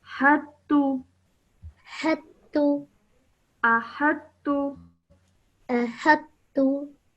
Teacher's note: you would ignore the sound of the ta and straight away join the ha to the ta.